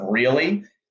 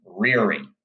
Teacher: they pronounce the L phoneme as an R